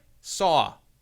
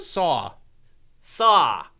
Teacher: you have an L at the end of your aw words